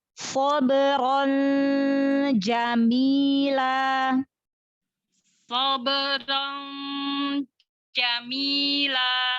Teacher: Angkat pangkal lidah. Sod huruf isti'la. Pangkal lidahnya diangkat.